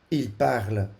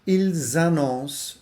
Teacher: Als het tweede woord met een klinker begint. Il parle wordt de S van il niet uitgesproken, maar ils annoncent wel.